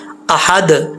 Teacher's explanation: جب وہ ساکن ہو تو ان میں قلقلہ ہوتا ہے، آواز یعنی قلقلہ کا مطلب آواز لوٹتی ہے